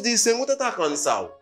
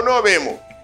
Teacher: Cuando están hablando, se dejan caer el sonido de esta letra. La letra S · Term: el sonido ese